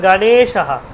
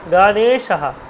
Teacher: যেহেতু এ কারটা কি আমার দীর্ঘ, দীর্ঘস্বর, এই জন্য দীর্ঘ উচ্চারণ হচ্ছে। গটা কিন্তু হ্রস্ব, এই যে গণেশা।